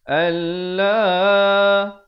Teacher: Dibacakan lafzul jalalah ini dengan tebal 2 harakat